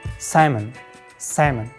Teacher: Native speakers drop the L letter and pronounce it like salmon. Salmon, not salmon.